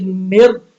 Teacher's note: جب را میم کے ساتھ ملے گا تو پھر موٹا نہیں پڑا جائے گا کیونکہ اس کے پھر را ساکن ہے اور اس سے پہلے والے حرف پہ زیر ہے